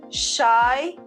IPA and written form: ʃaɪ (shy)